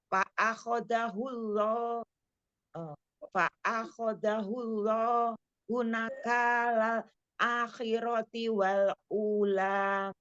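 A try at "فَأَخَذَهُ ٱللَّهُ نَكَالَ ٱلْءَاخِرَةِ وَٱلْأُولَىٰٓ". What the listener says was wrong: Jangan diputus, Jangan diputus. Fa'akhadahullahu nakalal akhirati wal ula.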